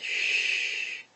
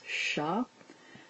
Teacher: then we have the shushing through your teeth, shh, with an ah underneath, sha.